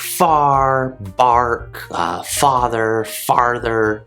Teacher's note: british speakers will not pronounce the r in the same way american speakers do